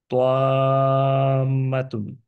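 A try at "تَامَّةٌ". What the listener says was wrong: আরেকটু লম্বা আরেকটা হচ্ছে যে তটা আবার একটুক্ষণ স্ট্রেট ধরে রাখি হ্যাঁ যে টাংটা একটু নিচে চলে গেছে পরের দিকে আপনার হ্যাঁ যে একই ভাবে ধরে রাখবো প প প এই পটাই ধরে রাখবো আমরা টাংটা মুভ করব না প প ওকে টাংটা নিচে দিব না প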